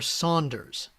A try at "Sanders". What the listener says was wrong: There's no U in Sanders. It's Sanders.